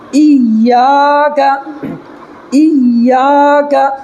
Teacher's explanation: الف مدہ کو ایک الف کے برابر کھینچ کر کے پڑھیں گے، اور ایک الف کی مقدار یعنی 1 سیکنڈ کھینچنا ہے۔